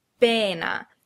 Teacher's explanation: Notice that the stress is on the first syllable, pena, and you know that because of the apostrophe before the first syllable.